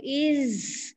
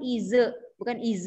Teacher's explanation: Zai dia ada bunyi ya, bunyi safir ataupun buzzing ya.